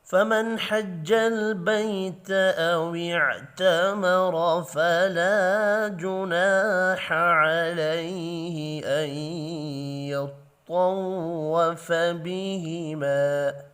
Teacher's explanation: نون ساکن کے بعد حا ہے، اظہار حلقی ہوگا، غنہ نہیں ہوگا